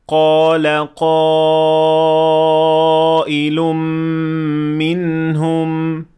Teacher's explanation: اسی طرح یہاں الف سے پہلے قاف آیا ہے جو موٹا حرف ہے، اسی لیے دونوں الف کو آ کی طرح پڑھا جائے گا